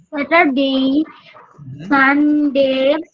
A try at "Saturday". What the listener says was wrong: হবে না, প্রথমটা বলবা স্যাঠা, ঠ দিয়ে বলবা স্যাটারডে, স্যাটার, ইয়েস বলো।